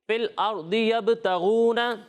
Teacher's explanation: یہاں پر ہم را کو پر پڑھیں گے, باریک نہیں پڑھیں گے.